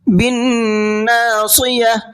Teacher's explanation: نون کے اندر غنہ کریں گے اور صاد کو پر کر کے پڑھیں گے